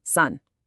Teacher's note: Let's take the word for mountain. In Korean, it's one short closed syllable